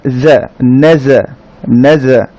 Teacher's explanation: জিহ্বার একেবারে আগা নিচের দাঁতের উপরের সাথে লাগিয়ে উচ্চারিত হবে জা